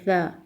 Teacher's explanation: سا میں زبان کی نوک سامنے والے دانتوں کے نچلے سرے پر لگائیں گے اور سا کو نرمی سے پڑھیں گے۔ سا میں سیٹی کی آواز نہیں آئے